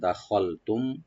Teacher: খাটাকে একটু রাইট দিয়ে একটু মোটা করে ডিপ করে পড়বেন